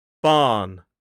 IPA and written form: bɑːn (barn)